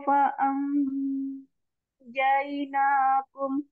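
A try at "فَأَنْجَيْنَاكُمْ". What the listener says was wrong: jainakum jangan terlalu terangkat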